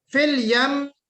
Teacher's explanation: فی الیم میں میم مشدد کا غنہ ہے